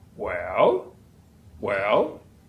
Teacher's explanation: that's a typically a falling Rising tone